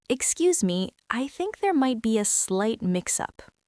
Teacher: You want your voice to sound collaborative and slightly inquisitive. Your pitch should go up slightly at the end of the sentence.